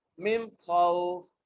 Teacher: یہاں پر بغیر جو ہے کھینچے پڑھنا ہے خوف کو، کیونکہ یہاں پر وہ مدہ نہیں ہے بلکہ یہاں پر لین کا قاعدہ لگ رہا ہے